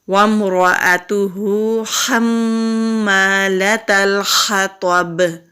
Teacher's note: تو حروف مستعلیہ میں سے ہے، موٹا پڑھیں گے